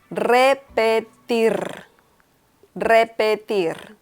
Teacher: the last R is also pronounced a little strong.